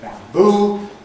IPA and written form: ˌbæmˈbuː (bamboo)